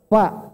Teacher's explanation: Fa itu cuma 1 bibir Pak. Fa cuma 1 bibir. Bibir bawah ketemu gigi seri atas. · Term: huruf fa